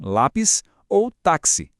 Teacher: a sílaba forte é a penúltima, ou seja, a segunda de trás para frente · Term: paroxítona